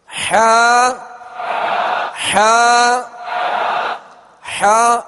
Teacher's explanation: حا کا جو مخرج ہے وہ حلق کے درمیان والے حصے سے حا ادا ہوتی ہے